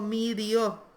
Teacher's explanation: Entonces lo que se produce es que esa E se cierra un poquito y queda una I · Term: cierre vocálico